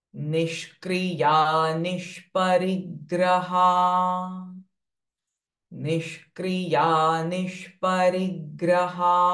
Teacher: Conjunct sound. Sh is joined with kr. and sh joined with pa.